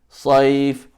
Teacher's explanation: So صيف is ya sakin preceded by a fatha, and you're stopping there. That makes it the soft mad